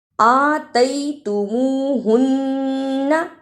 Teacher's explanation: الف پر کھڑی زبر ہے، اس کو تھوڑا سا لمبا کرنا